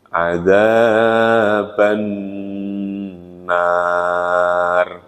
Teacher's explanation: Jadi ban ketemu nun tasdid dibaca dengung.